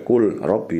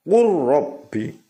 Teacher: Contoh lam sukun bertemu ro. Kul robbi harus dibaca kur robbi, langsung masuk ke huruf depannya ya. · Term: idgham mutaqaribain